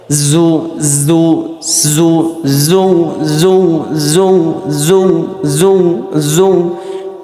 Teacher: উপরের দাঁত আর নিচের দাঁতের একটা ঘর্ষণ হচ্ছে, ঘষা লাগতেছে, ওই ঘষা লাগে আওয়াজটা হয়ে যাচ্ছে। জু জু জিহ্বার জিভে থাকবে কিন্তু জিহ্বা যা লাগাবে না, লাগালাগি করবে না, ঠিক আছে।